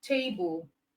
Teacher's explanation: Okay, table is a noun. Okay, it is a two syllable word, so it means it is stressed on the first syllable.